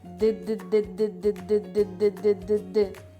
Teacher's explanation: вантажного транспорту так правильно ставимо її у гараж швидесенько дидидидидидидидидид д коли ми кажемо звук д кінчик язика знаходиться за верхніми зубками а губи набувають положення наступного голосного